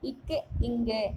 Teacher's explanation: நாவின் முதற்பகுதி அன்னத்தின் அடிப்பகுதியை பொருந்துவதால் பிறக்கும் எழுத்துக்கள்